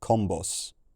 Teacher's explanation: That large scale shift in consonants that we've seen a couple of times before turns the G into a C and turns that voiced aspirated B, which I'm bad at pronouncing, into a normal B